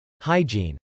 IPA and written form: hˈaɪdʒ.in (hygiene)